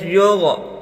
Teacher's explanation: غین کو موٹا کر کے پڑھیں